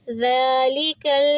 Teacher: زال کو ہم 2 حرکہ کریں گے کیونکہ اس کے اوپر ہے کھڑی زبر، ذالک، اور زال کو نرمی سے پڑھا جاتا ہے۔ ذالک، کاف کو لام سے ملائیں گے